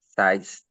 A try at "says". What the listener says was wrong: says. Says. Suena como si fuera una E. O sea, ya no digo el número 6. Say, in third person, says.